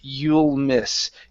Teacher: Okay, so we had the short I, but then here you said you'll miss. Okay, so connect the L to the M